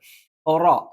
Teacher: നാവിന്റെ തലയുടെ മുതുക് മേലെ മുൻപല്ലിന്റെ മോണയിൽ വെച്ചുകൊണ്ടാണ് റ ഉച്ചരിക്കുന്നത്